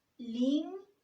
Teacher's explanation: Está compuesta por 2 sílabas. La fuerza de voz aparece en limpiáis, en la segunda sílaba, que en este caso es la última sílaba de la palabra. Por tanto, es una palabra aguda.